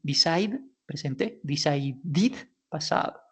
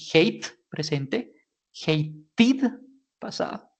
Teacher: cuando tenemos pronunciación que termina en sonido de T de tomate o de D de dedo, como hate, lo que vamos a hacer es modificarlo un poquitico para que efectivamente suene ese pasado y decir id